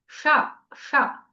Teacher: కొద్దిగా cup shape చేయాలి మన నాలుకని. టా వచ్చిన చోటి నుంచి ఇది వస్తుంది. ష ష. ఈ విధంగా పలకాలి. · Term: మూర్ధన్య అక్షరం